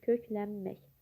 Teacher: N samiti M-ya çevrilir.